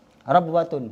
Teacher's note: Waw itu monyong, dia itu ngalir. Tapi kalau ba tertahan, syiddah juga qalqalah, beda jauh pokoknya lah.